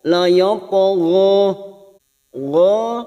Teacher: huruf istilla huruf tebal sehingga ketika dipantulkan posisi bibir kita seperti cemberut laho gho kita panjangkan dua harakat karena kita wakaf setiap ayat